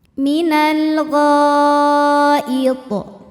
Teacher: Mad thabi'inya alif didahului fathah, hamzahnya i pada kata al ghaiti. Maka huruf ghain dipanjangkan boleh empat boleh lima harakat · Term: mad wajib muttasil